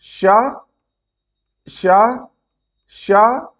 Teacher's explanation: स्वर तंत्र में कंपन नहीं होता स्वर तंत्र खुली रहती हैं और वायु बिना अवरोध के बाहर आ जाती है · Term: अघोष व्यंजन